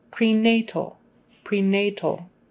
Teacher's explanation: prenatal emphasis on the nay prenatal prenatal and the al is kind of all together just